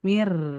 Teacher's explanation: Jadi dari mi ke rnya naik mir. Mir tapi tetap nipis. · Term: nabar, naber